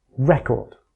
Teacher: stressing the first syllable gives us the noun record